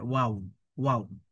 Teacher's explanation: ওয়াও অক্ষরটা সাধারণত দুই ঠোঁটের ভিজে জায়গা থেকে পড়তে হয়।